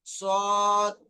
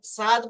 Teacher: সাদ পড়িনি, সদ, মুখ গোল করে শুরু করেছি